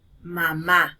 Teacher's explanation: Mamá recae en la última sílaba. Por eso es que entonces allí sentimos el mayor golpe de voz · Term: acento prosódico